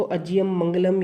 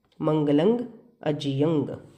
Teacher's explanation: संस्कृत के शब्दों में भी हमें अनुस्वार का उच्चारण ओष्ठ से नहीं बल्कि नासिका से करना चाहिए